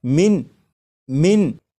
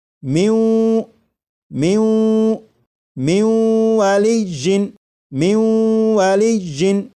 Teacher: جب نون ساکن کا واو میں ادغام کریں گے تو پھر یہ من نہیں پڑھا جائے گا